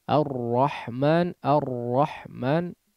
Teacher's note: huruf r kalau di dalam bahasa alquran ya ketika membaca Alquran huruf ra digetarkan dengan getaran yang halus itu namanya sifat taqrir pada huruf Ro